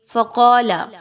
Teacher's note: قاف کو اس کے مخرج سے نکالیں گے، موٹا کر کے پڑھیں گے